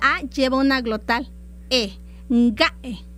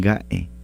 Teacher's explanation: después de la A lleva una glotal